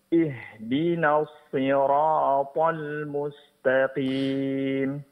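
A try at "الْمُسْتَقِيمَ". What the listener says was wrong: Sinnya tipiskan. Al-mustaqim. Dan mad arili sukunnya panjangkan 4 harakat.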